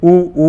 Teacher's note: ऊ बोलता हूँ तो गोल होठ बनते